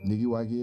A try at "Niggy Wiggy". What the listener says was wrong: It's not nigga waggy. It's Niggy Wiggy.